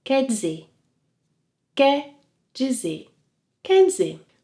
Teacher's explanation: When speaking quickly, Brazilians may drop the final R sound.